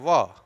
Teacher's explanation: ओष्ठ का निचला भाग दांत के पास आता है